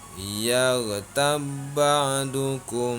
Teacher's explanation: Cara membacanya ba mati dipadukan dengan ba di depannya karena hukum bacaannya adalah idgham mutamatsilain.